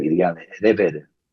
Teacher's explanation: Hacen como en vez de la L es como una R.